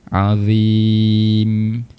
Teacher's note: Macam ayat yang kedua, hujung sekali adalah huruf mim. Makhraj huruf mim di bahagian bibir, perlu rapatkan kedua bibir kita. Azim. Rapat bibir.